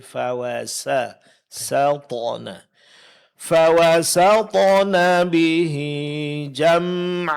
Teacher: huruf sin tetap tipis jangan terpengaruh oleh tebalnya huruf th setelanya